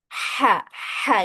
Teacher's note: Kemudian huruf ha ini dia punya sifat hames ya atau mengeluarkan angin. Jadi dia wajib keluar anginnya ya.